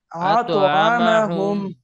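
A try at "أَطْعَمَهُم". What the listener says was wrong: আরো মোটা করে আতআমাহুম।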